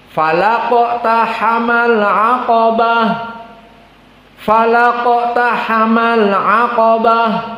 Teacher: semuanya muraqqaqah kecuali qaf pada iqtahama dan al-aqabah. Maka di sini kita baca dengan tafkhim, falaqtahamal aqabah, falaqtahamal aqabah.